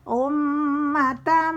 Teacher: mim bertasydid itu mendengung ukuran 2 ketukan · tanwin bertemu mim itu gombi gunnah, mendengung juga